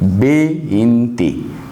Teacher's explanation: In Spanish, this does not give v sound, but it gives b sound.